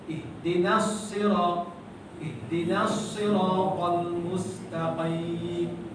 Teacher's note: Qim tebal sebab qaf.